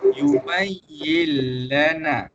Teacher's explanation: Masuk dengan dengung. Idgham bila gunnah masuk tapi tanpa dengung.